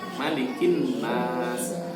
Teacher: Kalau dalam surah An-Nas pendek ma-nya, malikin nas, bukan malikin.